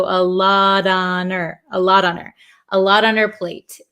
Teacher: the H in her kind of disappears also